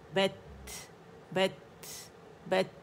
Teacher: अगर आपने अथ अथ कहा तो आपने इसमें हा शामिल कर दिया, आवाज़ शामिल कर दी, वो शामिल नहीं करनी, आपने हवा रिलीज़ करनी है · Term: हम्स